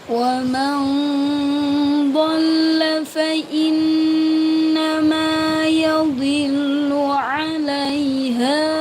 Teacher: Nun sukun bertemu dengan dod dibaca samar · Ma pada fathah yang diikuti alif dibaca panjang